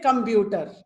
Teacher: they speak all the syllables in the same pitch